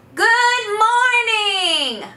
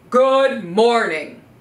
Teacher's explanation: in a high-pitched voice, like I'm calling over a fence to my neighbor